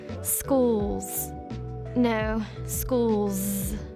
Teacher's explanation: I think that's a z in the plural s there